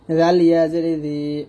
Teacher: জিহ্বাটা উপর দাঁতে আগে লাগিয়ে জাল পাতলে উচ্চারণ করতে হবে।